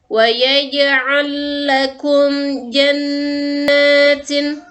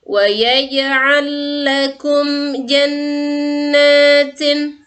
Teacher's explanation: lam yang pertama dimasukkan ke lam yang kedua seperti huruf yang ditasydidkan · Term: idgham mutamatsilain